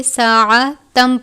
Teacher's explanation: ساعۃ من المال، تنوین ہے، اس کے بعد میم مشدد ہے، تنوین کو میم مشدد سے ملا کر ادا کریں گے۔ ساعتن نہیں پڑھیں گے بلکہ ساعتم پڑھیں گے۔